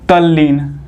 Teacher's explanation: यहाँ पे कह रहा है कि त के बाद ल आता है तो त का जो है कि ल हो जाता है